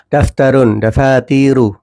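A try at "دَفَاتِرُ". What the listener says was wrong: pendek, diulangi, taknya pendek.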